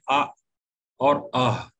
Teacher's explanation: حمزہ اور ہا، یہ حلق کے آخری حصے سے نکلتے ہیں۔ جیسا کہ اگر کسی کا مخرج معلوم کرنا ہے تو حمزہ سے پہلے آپ الف زبر لگا دیں، آ اور آہ۔